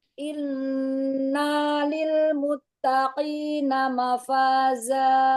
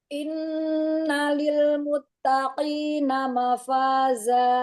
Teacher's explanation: nanya jangan dipanjangkan, tidak ada mat pada na